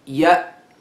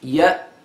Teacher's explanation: sound yeah the second letter that I am pronouncing yeah and it is pronounced by complete closure of the vocal cords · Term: glottal stop